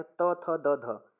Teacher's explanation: जिनको दांत से बोला जाता है वो दंत व्य होते हैं